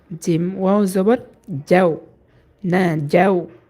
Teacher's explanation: জিমের মাখরাজ হচ্ছে ছয় নাম্বার মাখরাজ জিব্বার মধ্যখান তার বরাবর উপরে তালের সঙ্গে লাগাইয়া